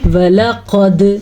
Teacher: दाल पे कलकला करना है, क़ाफ को मोटा पढ़ना है और यहाँ पे इख्फा का कायदा करना है, यानी कि गुन्ना भी करना है और नून साकिन की आवाज़ को छुपा भी देना है।